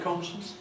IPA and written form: ˡkɒnʃns (conscience)